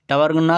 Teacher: टवर्गना का उच्चारण मूर्धा के साथ नाक से होगा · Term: नासिक व्यंजन